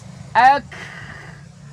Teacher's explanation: Seperti ketika kaf mati, sifatnya harus berhembus. Ak. Jangan di stop.